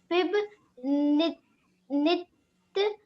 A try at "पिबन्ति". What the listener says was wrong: देखिए दीपिका, पिब तिंत नहीं है, पिबंत पवनम, यहाँ पे देखिए पिबंत, ना पे ना आता है तो ताप इस पे आधा ना होता तो उसको अंदर ले आता है, यहाँ देखिए ताप पे छोटी मानता है पिबंत, और ये